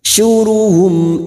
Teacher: mim sukun bertemu Hamzah mim sukun dibaca jelas tanpa mendengung